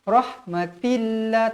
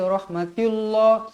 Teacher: lafzul jalalah dekat sini dibaca nipis kerana sebelumnya berbaris bawah.